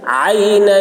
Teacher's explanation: عین حلق سے ادا کریں گے